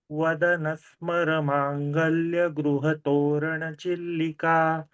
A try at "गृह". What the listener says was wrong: Here at Griha, okay, Griha, you said Gruha, okay. South Indians say like that, and North Indians say Griha. Both are wrong. It should be Griha, gr. See, if it is like Guha, Guha and Gruha, if you say, what is the difference? Nothing. So Guha, U, Griha, gr.